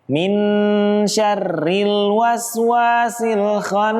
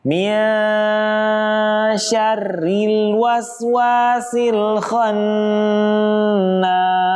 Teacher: harusnya dibaca dengan hukum tajwid ikhfa dan juga ditahan atau didengungkan